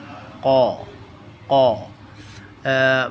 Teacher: हमारी ज़ुबान का जो आखिरी हिस्सा है, उसकी जड़ है, ज़ुबान की जो रूट्स हैं, क़ाफ़, वो हमारे जो पैलेट है उसके साथ टच करती हैं तो क़ाफ़ की आवाज़ प्रोड्यूस होती है.